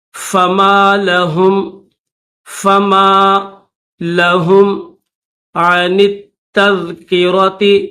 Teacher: نون کو تا کے ساتھ ملائیں گے، درمیان میں یہ الف اور لام نہیں پڑھیں گے،